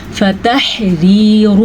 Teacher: یہ را باریک پڑھی جائے گی کیونکہ اس را کے نیچے زیر ہے